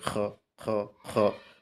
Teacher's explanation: কণ্ঠনালী শেষ অংশ একটু খড়খড় করে